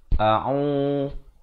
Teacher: Ain makhrajnya di pertengahan kerongkong